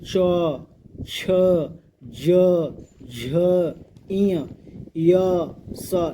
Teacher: तो जैसे देखिए ई चवर्ग, बोले च छ ज झ इय य स, ये सब जो भी हम लोग कैसे बोल रहे हैं, देखिए तो हम लोग तालु से बोल रहे हैं। देखिए य स, ये सब जो भी है इसको तालु से बोलता है, जिसको शुद्ध हिंदी में तालव्य बोला जाता है, ठीक।